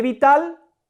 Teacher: Sílaba tónica de vital es tal.